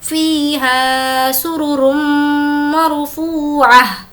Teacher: را کو میم سے ملائیں گے اور غنہ کریں گے کیونکہ میم پر تشدید ہے